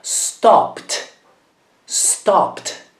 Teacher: Qui la parola finisce con una P, un suono forte, e quindi prende sempre la T come suono.